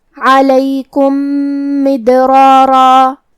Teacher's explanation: کلمت مدرارا میم حروف الادغام میں سے ہے تو ہم پہلے میم کو دوسرے میم میں ملا کے ایک ہی میم غنہ اور تشدید کے ساتھ پڑھیں گے